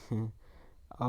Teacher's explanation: ओ आपका कंठोष्ठ है, दीर्घ है, पश्च, अर्ध विवृत, वृत्तमुखी। औ आपका है कंठोष्ठ यानी कंठ और ओष्ठ, दीर्घ, पश्च, विवृत और वृत्तमुखी